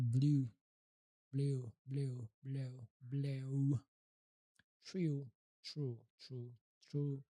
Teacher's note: long U, tense back of the mouth, lips rounded